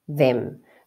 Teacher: that's a th and your tongue goes between your teeth that's always a th now that is a short vowel sound